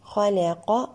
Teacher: الخاء مفخمة اللام مرققة القاف مفخمة ويجب إتمام الحركات.